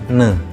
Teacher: Misalnya bunyi laminopanatal ne ya. Bunyi ini melibatkan daun lidah sebagai artikulator aktif dan langit-langit keras sebagai artikulator pasif.